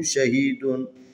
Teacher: شین زبر شاہ ہا زیر یا ہی شہید دال دو پیش دون شہیدن. یہاں پر بھی حروف مدی ہے، یا ساکن ہے، اس سے پہلے ہا کے نیچے زیر ہے جو یا کی مناسب حرکت ہے، اس کو کھینچنا ہے